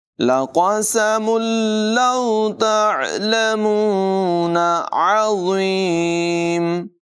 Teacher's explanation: मीम पर तनवीन है और तनवीन के बाद लाम हुरूफ़ मालूम में से है, इसको मिलाकर बग़ैर गुन्ने के पढ़ेंगे। लक़समुन लौ तअलमून अज़ीम, आइन की आवाज़ नुमायाँ करेंगे, ज़ा को पुर पढ़ेंगे, बग़ैर सीटी के अदायगी होगी।